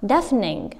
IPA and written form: ˈdefnɪŋ (deafening)